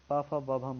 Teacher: दोनों ओठ हमारे आपस में टकराते हैं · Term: ओष्ठ